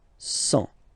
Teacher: Remember, final T not pronounced.